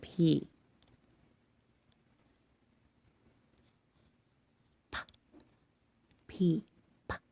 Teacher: you start with your mouth closed and lips touching and your teeth apart as your mouth open a puff of air is pushed through to make that sound